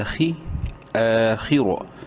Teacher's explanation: رو کو بھی منہ بھر کے پڑھنا ہے زبر کی وجہ سے